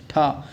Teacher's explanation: ठ मूर्धन्य महाप्राण अघोष व्यंजन का उदाहरण है